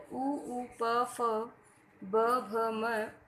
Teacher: इन वर्णों का उच्चारण दोनों होठों से होता है, अतः ये ओष्ठ वर्ण कहलाते हैं।